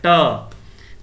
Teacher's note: ट जो है दोस्तों ये मूर्धन्य है ना, मूर्धन्य वाला उच्चारण है